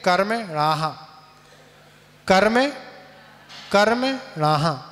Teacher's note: जैसे दीवाल से कोई आवाज आप बोले, दीवाल से टकरा के वापस आ रही आवाज, उसको बोलते हैं विसर्ग का उच्चारण